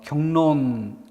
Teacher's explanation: 앞말의 받침 기억이 이응으로 바뀐다는 것이고 뒷말의 리을이 니은으로 바뀌는 그러니까 이건 상호동화죠. 역순행동화죠. 앞뒤가 서로 영향을 주고받으면서 서로 변화하는 현상에 해당됩니다.